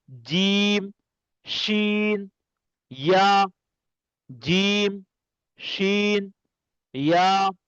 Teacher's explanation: উপরের গোস্তর সঙ্গে লাগবে এবং শক্তভাবে এই তিনটা অক্ষর উচ্চারণ হবে।